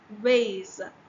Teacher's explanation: there is like a vibration that happens when you're trying to pronounce ways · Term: voiced